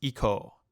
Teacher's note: and for volitional form iku becomes eco again note here that the O is an elongated o sound essentially we keep the consonant the same but change the vowel